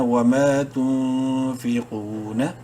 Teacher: منہ بھر کے پڑھتے ہوئے قاف کو ایک الف کے برابر لمبا کریں گے · نون ساکن کے بعد فا حروف حلقی میں سے نہیں ہے، اخفا کریں گے نون میں